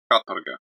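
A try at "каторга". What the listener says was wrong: the O is basically an A. It's like katarga. And the emphasis is on the first A. So it's katarga. Katarga, yeah.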